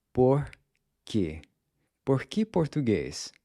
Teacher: make sure that there's no puff of air when you pronounce the P and K sounds.